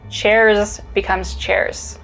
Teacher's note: voicings we use the voiceless equivalent which is an s so the z sounds at the end of words turn into more of an s sound